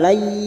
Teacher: Wa ra'ina kita uraikan dari kata lay masuk pada huruf ya yang bertasdid hanya masuk tanpa mendengung